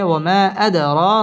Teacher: বামে হামজা মধ্যে মুনফাসিল তিন আলিফ টেনে পড়তে হবে ওয়ামা আদ দাল কলকলার হরফ ধাক্কা দিয়ে পড়তে হবে